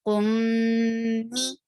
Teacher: Whenever you find meme with tashdid, you will give gunna, and it is a longer gunna. Keep the sound for a longer time in your nose.